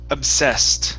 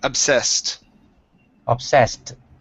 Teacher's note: the ed at the very end will be pronounced like a t